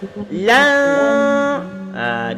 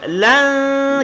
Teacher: Lan dia menyembunyikan nun. Lan kemudian berserta dengung.